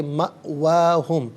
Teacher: حمزہ ساکن ہے، جھٹکے کے ساتھ ادا کیا جائے گا